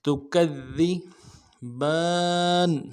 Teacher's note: ربکما، ما، ربکما تکذبان، تکذبان، تا کو نرم سے ادا کرنا ہے، کاف کو ذال کے ساتھ ملانا ہے، ذال کو باریک ادا کریں گے، ذال کے اوپر تشدید ہے، زور دیں گے، اگلے ذال کو نرم سے ادا کریں۔